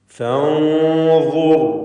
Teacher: സാക്കിനത്തായ നൂനും ശേഷം ളാഉമാണ്. ഇഖ്ഫാ ഹഖീഖി നൽകി മറച്ച് മണിക്കുക. മണിക്കലിൽ തഫ്ഖീം വേണം.